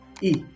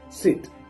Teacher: This is a short front vowel pronounced with the tongue positioned high and towards the front of the mouth.